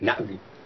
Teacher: the apostrophe there meant something which is a glottal stop that little break